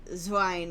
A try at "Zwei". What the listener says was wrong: no N in Zwei. You're saying it like Zwine, like swine. Zwei. It's like Zwei. Because E makes the I sound and I makes the E sound.